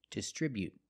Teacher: You can make a stop t and say distribute. It's more natural.